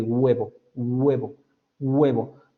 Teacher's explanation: Usted empieza con los labios y termina en el velo. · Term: labiovelar